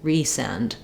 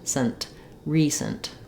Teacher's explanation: But then when we get to recent, you can hear how it sounds different than resend, not just because of the D and the T, but also because it has first syllable stress and the second syllable in recent is reduced. So I have resend with clear F vowel and length, but in recent, it's almost like I don't say that vowel in the second syllable at all.